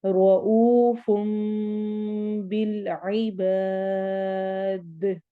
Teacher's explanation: رو کو موٹا پڑھنا ہے، او پہ واو مدہ ہوگی.